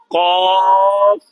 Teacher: Makhrajnya qaf, pangkal lidah bertemu dengan lelangit lembut saja